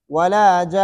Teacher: ایک الف کے برابر غنہ ہوگا اس میں